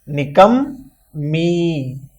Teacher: یہاں میم پر تشدید ہے، اس لیے میم کو 2 بار پڑھیں گے، جیسے نکم می۔